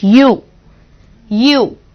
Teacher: ওয়াই দিয়ে মনে হচ্ছে সাউন্ডটা স্টার্ট হচ্ছে, which is a consonant sound. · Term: consonant sound ওয়াই